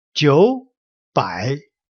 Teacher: But like I said, with the two words, both with the third tone, the first one changed to a second tone, which just goes up